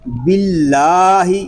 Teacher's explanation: اللہ پاک کے لام سے پہلے حرف کے نیچے زیر آ گیا ہے، اس لیے ہم اللہ پاک کے لام کو باریک پڑھیں گے، باللہ ہی پڑھیں گے۔